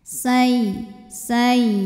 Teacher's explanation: Min say. Huruf ya tasydid tapi sebelumnya bukan tanwin, bukan nun sukun, maka bukan idgham bi gunnah. Dibacanya tidak perlu ditahan, jadi cukup dihentak pakai naber.